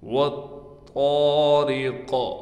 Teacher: قاف پر وقف کی حالت میں قلقلہ کیا جائے گا